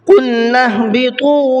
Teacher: قلنا اهبطوا منها جميعا، قلنا کے اندر بڑا قاف ہے، منہ بھر کے پڑھیں گے۔ نهبطوا، طا، اس کو منہ بھر کے پڑھیں گے، طا کو، اور تھوڑا سا کھینچ کر کے بھی پڑھیں گے۔